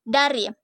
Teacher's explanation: Bunyi D dengan ciri-ciri hidup, oral, apikodental, plosif dengan contoh kata dari.